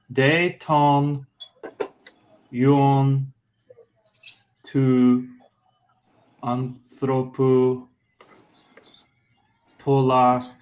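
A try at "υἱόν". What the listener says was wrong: Now, the only thing I would say is it's huion. That's a rough breathing with the H. Huion.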